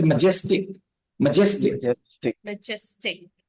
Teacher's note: The stress is on the second syllable, majestic.